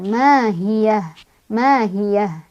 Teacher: hak yang bukan didorong dari dada melainkan dari tenggorokan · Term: hak gede, ha gede